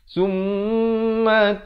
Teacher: wajibul gunnah dengung 2 harakat